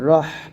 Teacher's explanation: হাটা গলা মাঝখান থেকে চাপ দিয়ে নিয়ে আসতে হবে